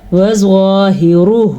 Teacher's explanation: را کو بھی پر پڑا کیونکہ را کے اوپر پیش ہے، زوا حروف مستعلیہ میں سے ہے اسی لیے ہم نے اس کو موٹا کر کے پڑھنا ہے · زوا کو پر پڑا، ہا کے تلفظ کا دھیان رکھا، را کو بھی پر پڑا کیونکہ را کے اوپر پیش ہے